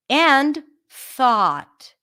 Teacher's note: So this is a voiceless TH.